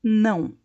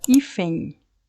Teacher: como que nós produzimos este n tocando a ponta da língua na parte de trás dos dentes superiores